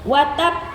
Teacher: Ya, di atasnya itu ada tanda tasydid seperti gigi gitu ya. Nah, karena ada tasydid itu jadi ditahan dulu dia diberhentikan dulu bnya baru dipantulkan suaranya watab gitu ya. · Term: qalqalah kubra